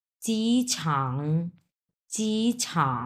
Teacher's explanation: প্রথম টোন এবং তিন নাম্বার টন